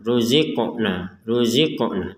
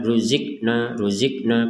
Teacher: ada Q sukun ini harus kita pantulkan ruziqna ruzina tidak sekedar ruqna ruqna kan Tidak ada pantulan maka